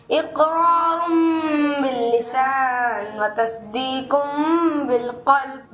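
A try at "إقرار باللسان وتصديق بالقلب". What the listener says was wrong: ماشاءاللہ اچھے انداز سے سنایا, مگر اقرار باللسان و تصدیق بالقلب, اب اس میں بھی عربی تو ہے نا, ٹھیک ہے, قرآن پاک نہیں, مگر عربی ہونے کی وجہ سے ہم قلقلہ بھی کوشش کریں, قلقلہ کریں.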